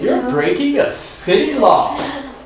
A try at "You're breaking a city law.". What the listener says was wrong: No, softly and quiet and this.